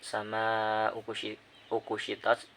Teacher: Terus pada kata sama ukushitos itu terdapat mad wajib mutasil, sebab ada mad tobi'i alif di fathah bertemu dengan hamzah dalam satu kata, jadi panjangnya itu 5 harokat, yaitu terdapat tanda seperti layar, jadi itu dibaca 5 harokat.